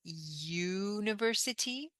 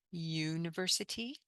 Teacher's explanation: we start this pronunciation with ya, not u